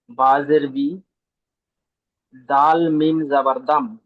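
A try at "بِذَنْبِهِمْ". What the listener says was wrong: দাল নয়, ওটা জাল। জাল প্রথমে নুন পড়েন, জাল নুন যাবার জান। হ্যাঁ, প্রথমে নুন পড়বেন। দেখেন যখন বাটা আসেনি তখন কিন্তু নুন ঠিক ছিল, কিন্তু যখন এই নুন সাকিনের পরে বাটা এসছে তখন মিম হয়ে যাবে, এই মিমটা হয়ে যাবে।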